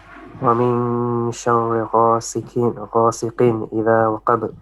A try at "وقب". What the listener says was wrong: وقب. قب. Qaf is more heavy and ba with the qalqala. وقب.